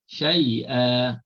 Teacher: tetapi bila kita waqafkan syai'a, dua harakat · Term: mad iwat